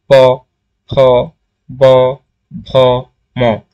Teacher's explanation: যেমন প উচ্চারণ করো আমার সাথে সাথে তাহলে বিষয়টা বুঝতে পার। দুই ঠোট মানে একত্রে কাজ করে। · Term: অষ্ঠ ব্যঞ্জন